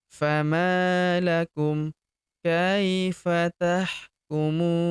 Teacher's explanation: Huruf mu kita panjangkan 2, 4 atau 6 harokat karena di depan huruf mu terdapat waw sukun sebelum huruf pemberhentian. dan huruf pemberhentian huruf na kita sukunkan atau kita matikan.